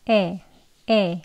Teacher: 턱을 살짝 떨구면서 에, 에 이렇게 짧게 발음합니다. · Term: 소문자 에 소리